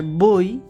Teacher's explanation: এই অটা হচ্ছে একটি পূর্ণ স্বরধ্বনি, কিন্তু এর সাথে একটি রস্বই যুক্ত হচ্ছে, এটি হচ্ছে অর্ধ স্বরধ্বনি।